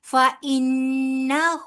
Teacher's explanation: نون مشدد کی وجہ سے غنہ ہوگا